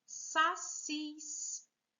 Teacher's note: Vejam, o cis aqui também, última sílaba mais forte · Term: oxítona